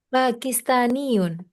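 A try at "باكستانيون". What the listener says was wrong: Sahih, ahsanti.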